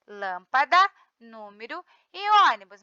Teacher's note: Proparoxítona, a sílaba tônica é a antepenúltima.